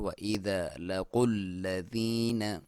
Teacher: क़ाफ को मोटा, लाम पे आपने दबाव के साथ क्योंकि शद है। व इज़ा लकुल्लज़ीन, या साकिन से पहले ज़ेर हो तो या मद्दा कहते हैं, लंबाई एक अलिफ।